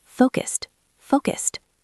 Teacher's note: Did you notice the ed sound at the end of focused? It sounds like a T.